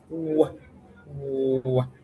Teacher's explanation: It's an approximant, a bilabial approximant, but unlike all the other bilabial sounds, you see that the lips do not meet because it approximates the bilabial place of articulation.